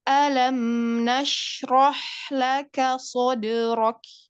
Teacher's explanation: mim sukunnya itu bertemu dengan huruf nun itu hukumnya izhar syafawi maka mim sukunnya dibaca jelas ya dibaca jelas